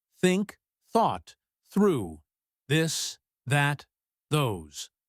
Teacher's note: the th sound in think or that is made by touching your tongue lightly between your teeth